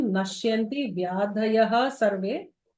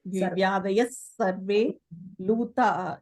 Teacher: when there is a visarga followed by any sibilant, then the sibilant actually becomes emphasized. There will be two S's.